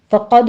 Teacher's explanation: فقد میں قوف پر پڑھنا ہے، دال پر قلقلہ ہے